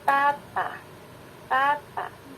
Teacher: Bunyi t itu adalah bunyi yang melibatkan apiko atau ujung lidah yang menyentuh alveolar. Tata, tata, t dan d adalah bunyi alveolar, gitu ya.